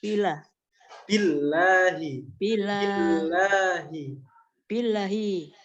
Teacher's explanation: Billahi. Ba-nya yang nggak boleh panjang. Ba-nya dimasukkan ke huruf lam.